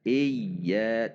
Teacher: Selanjutnya hamzah kasrah masuk ke ya tasydid sebagaimana yang tadi sudah dijelaskan, ada tekanan i. Karena huruf tasydid sesungguhnya adalah terdiri dari 2 huruf, yaitu huruf ya yang sukun dan huruf ya yang berharokat. Sehingga cara membacanya iya, tidak boleh dipanjangkan, iya juga tidak dihentak, iya.